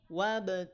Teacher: tidak monyong tidak maju bibirnya wab cukup naikin pangkal lidahnya